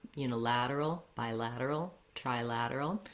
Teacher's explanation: Again, with the uni, bi, and tri, there's a little stress on those, clear vowel, but you don't really want to be making a lot of length there. You're always going to have the stress on the lad syllable, the la, unilateral, bilateral, trilateral.